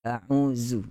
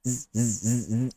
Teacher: Huruf huruf zal dia tidak ada desiran. Kalau ada z, z, z, z, macam keren tu, ada geseran-geseran tu z.